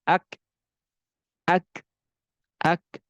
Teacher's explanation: pada huruf Kaf Dia memiliki syiddah dan juga memiliki sifat HAM jadi sidah itu seperti halnya kita etahui suaranya tertahan akan tetapi